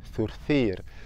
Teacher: La langue doit sortir à chaque fois